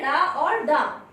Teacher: इनके उच्चारण में जीभ ऊपर उठकर झटके के साथ नीचे गिरती है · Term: उच्छिप्त व्यंजन